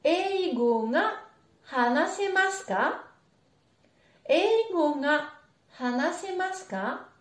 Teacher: on n'entend pas vraiment ga, c'est très nasalisé, ça ressemble un peu à un a